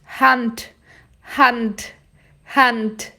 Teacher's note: E o D no final vai ter som de T. Vai ser explodido.